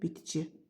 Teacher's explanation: Samitlərdən ikisi çar, biri cinciltilidir.